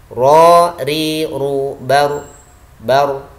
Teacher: Ini sifat yang khusus buat ro adalah takrir. Artinya bergetarnya lidah. · Istifal artinya lidah turun ke arah bawah. Ra memiliki sifat lidah turun ke arah bawah, istifal. Berikutnya ra adalah juga memiliki sifat tawasud.